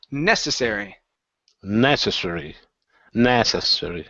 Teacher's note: Stress is here at the beginning. Da-da-da-dum.